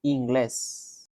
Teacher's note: A little bit of accent in the last syllable, in the last part, in the inglés.